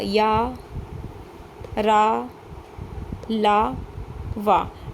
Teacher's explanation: जीभ मुंह के किसी भी भाग को नहीं छूती। और जो हवा है वो बिना रगड़ खाए मुंह से बाहर निकल जाती है। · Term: अंतस्थ व्यंजन